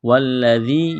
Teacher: وجہ سے سختی کریں گے۔ واللہ ذال یا زیر دی، والذی یا ساکن سے پہلے زیر ہے، الف کے برابر کھینچنا ہے